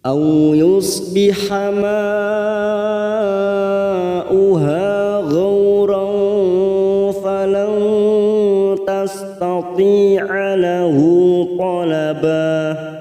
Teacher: Au yusbiha ma masuk kata huruf mim yang berharokat panjang, mad yang bertemu dengan hamzah dalam satu kalimat, mad wajib mutasil 4 harokat kita panjangkan